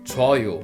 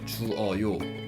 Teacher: So if I want to attach ending words 어요 to the verb stem, it will be 주어요, but we Korean don't usually say 주어요 because vowel u and 어, they are put together and become one diphthong 워, so we usually say 줘요 rather than 주어요.